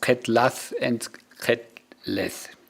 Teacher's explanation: But this weak vocalization is not accepted in terms of syllable structure, and the schwa is upgraded to e